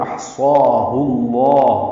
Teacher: ہا کو ضمیر ہے، اس کو لام اسم جلالہ سے ملانا ہے تو احصاہ اللہ ہو جائے گا. لام اسم جلالہ کو ہا کی پیش کی وجہ سے پر پڑھیں گے، 2 حرکات لمبا کریں گے